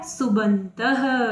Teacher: प आपका प्रथम वर्ण है, सामने स्वर आया है तो प का ब हो गया